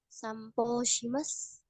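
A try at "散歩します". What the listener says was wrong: Itu po tidak panjang ya, sampo sih mas. Karena sampo itu jadinya panjang po gitu.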